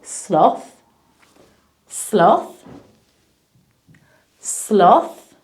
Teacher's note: because the letters T and H together make the sound now to make the sound your tongue touches your teeth and it's almost like you're poking your tongue out